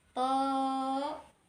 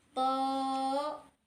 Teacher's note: To-nya kita baca 2 harokat dan ha-nya kita baca 2 harokat.